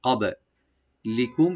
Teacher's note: বাটাকে একটু আমরা হালকা ইকু করব, কলকলা করব , কবে লিকুম, লি বলবো, আর মিম সাকিন এখানে এজাহার করব।